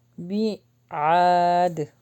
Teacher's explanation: اینڈ میں قلقلہ ہوا کیونکہ دال پر ہم رک رہے ہیں